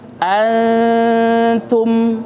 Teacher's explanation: Jadi gunnahnya itu tipis, tidak miltin. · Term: ikhfa